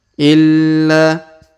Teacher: huruf la kita tahan dan kita tekan lalu kita panjangkan dua harakat